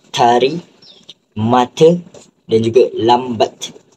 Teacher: letusan gusi te akan mengeluarkan bunyi te